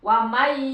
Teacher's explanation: nun mati menghadapi iya, masuk ke iya. Jadi suaranya suara iya. Wa may, nunnya lembur. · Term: idgham